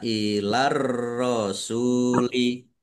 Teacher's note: Ilar rosuli, ar-rosuli alif lam samsiah, karena tidak dibaca, langsung masuk ke huruf berikutnya, yaitu ro, ditandai roknya ada tasdidnya.